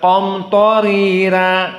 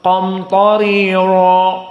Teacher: Maka di sini qamtarira dua-duanya muraqqaqah bagi Wars an-Nafi'.